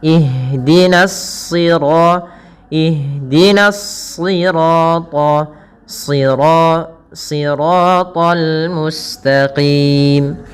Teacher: yang ditebalkan adalah huruf shadnya yang di mana di sini huruf shad termasuk huruf-huruf istla yang dia pangkal lidahnya terangkat dan menebal